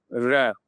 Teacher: र थोड़ा सा रुक करके आएगा तो ये लुंठित के अंतर्गत आ जाएगा